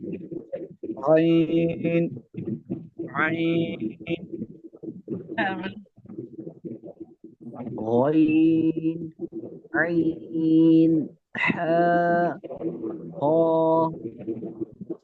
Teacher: आइन और गैन को 3 हर्फ की मिकदार खींचना होता है जब मुफरद मश करते हैं इनके